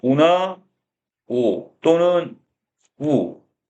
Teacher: 이게 들어가면 입술이 둥그러지는 원순 모음이라고 그랬죠?